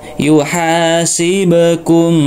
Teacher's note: Perhatikan di sini ada huruf ba yang sukun, maka dikolkolahkan atau dipantulkan ya.